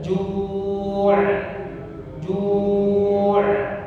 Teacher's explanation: Huruf ain alirkan. Ketika berhenti sukun dialirkan.